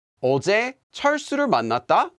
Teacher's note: Note that this is not a question, although it does have a rising intonation.